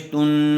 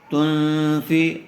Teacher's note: گننے کے ساتھ اخفا ہوگا، اس لیے کہ نون ساکن کے بعد فا آیا ہوا ہے